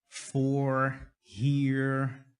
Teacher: Não é muito parecido com o inglês que eu tenho, não tem esse Rzão tão puxado quanto ela, mas é tipo o nosso carne, porta, ela tem bem esse inglesão, mas é bem comum esse inglês nos Estados Unidos, esse R mais forte. O R em inglês normalmente é enrolado, mas o dela é um pouquinho mais.